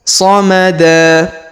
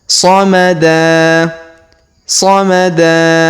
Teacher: Huruf da kita panjangkan 2 harokat karena di depannya terdapat alif ya